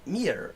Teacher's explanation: it actually has kind of a soft R. Like an Irish kind of R.